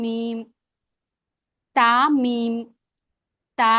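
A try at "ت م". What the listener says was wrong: చాలా బాగా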